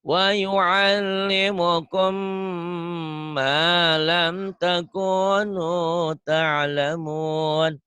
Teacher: Idgham mimi ada gunahnya ya. Karena mimnya bertasdid.